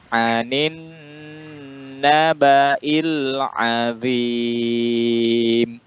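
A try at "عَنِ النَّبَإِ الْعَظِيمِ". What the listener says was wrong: Bagus, pengucapan I-nya pas ya.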